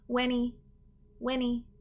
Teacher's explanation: we can skip the h